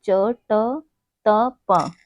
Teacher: यह हमारे अघोष और अल्पप्राण हैं